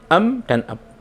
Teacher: mim dan ba mempunyai kedekatan makhraj, yaitu makhraj yang sama-sama keluar dari kedua bibir yang tertutup